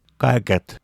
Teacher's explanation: Г с нижним выносным элементом или дисцендером. Звонкий, увулярный, взрывной, согласный. Звонкая пара к согласному ка.